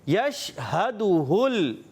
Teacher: ہا کو بھی کلیئر رکھنا ہے حلق کے نیچے والے حصے سے, اور یہ بھی ہا حلق کے نیچے والے حصے سے.